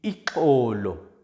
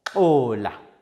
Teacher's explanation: The next click sound, or is made by placing the tongue so that the back of the tongue touches the soft palate and the sides, as well as the tip of the tongue touching the gums. One side of the tongue is quickly withdrawn from the gums